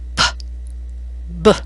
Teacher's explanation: With p, there is no vibration in your throat, and with b, your throat vibrates. Grasp your throat with just your thumb and index finger just under the chin and feel the difference.